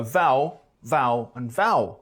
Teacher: Al, ale, owl merged to owl